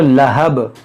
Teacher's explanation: रुकेंगे तो लहब, बा में कलकला होगा